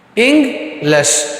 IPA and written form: ˈɪŋɡlɪʃ (English)